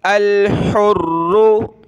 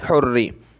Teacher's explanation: अल हुर्रु बिल हुर्री, अल हुर्रु, हमज़ा लाम ज़बर अल, हा रा पेश हुर, रा पेश रू, हुर्रु। रा पे ये तशदीद है तो इसको सख्त करेंगे, और इसके साथ ये कलरफुल है तो इसको मोटा करना है